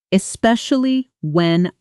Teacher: Especially when it flows together almost like one word, especially when not four separate hard stops. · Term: connected speech